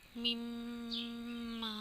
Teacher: نون ساکن کے بعد ادغام میں سے یعنی کہ ینمو میں سے میم آ گیا تو یہاں پہ ہم ادغام مع الغنہ کا قاعدہ کریں گے اور غنہ کر کے پڑھیں گے